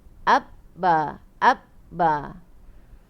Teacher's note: Dia huruf bibir kan? Ba, makhraj dia dekat 2 bibir kan? So lidah tu tak ke mana-mana. Lidah tu datar je.